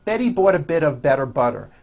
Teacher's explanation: notice that you do not hear any T sounds. T, t. They're only Ds, D, D, which are voiced.